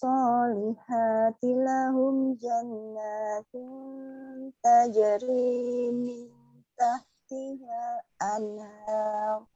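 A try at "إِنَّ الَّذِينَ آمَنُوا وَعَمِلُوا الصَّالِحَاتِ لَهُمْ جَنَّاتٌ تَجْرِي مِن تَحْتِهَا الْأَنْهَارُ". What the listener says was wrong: Ya, izin koreksi ya Bunda di ayat 11 di huruf H wa 'amilus solihati ha. Nah, ini mengeluarkan udara.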